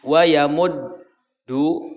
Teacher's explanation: Wayamud, tahan dalnya, dal pertama, ya, dal yang pertama itu dal sukun, maka ditahan dalnya.